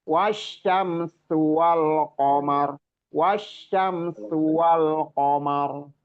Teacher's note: sinnya itu lebih didesiskan lagi ya